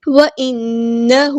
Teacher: نون پہ یہاں پہ غنہ زمانی ہو رہا ہے، الف کے برابر رکیں گے